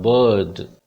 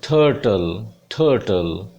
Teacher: Then ये जो लिखा हुआ है आप देख रहे हैं उल्ट, ये ऐसा लगता है जैसे 3 डाला हुआ हो और उसके बाद 2 डॉट हैं। ये अ साउंड की लॉन्ग साउंड है और ये कुछ टिपिकल सी साउंड है जब रा साउंड बोली नहीं जाती, जैसे बर्ड, BIRD, तो बर्ड, तो ये साउंड लगती है, सीधा डा बोला जाता है, बर्ड।